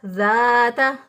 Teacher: इसी तरह ज़ाता, ज़ाल ज़बर अलिफ ज़ा, अलिफ मद्दा, अलिफ से पहले वाले हरफ पर ज़बर 1 अलिफ के बराबर लंबा करेंगे